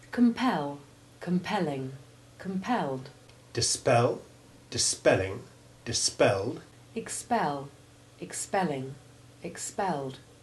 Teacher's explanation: the stress on the syllable PEL in all forms of the verb and its derivatives, and the E always has the short E1 sound